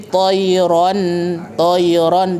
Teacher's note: dialirkan suaranya betul ya bukan bukan dihentikan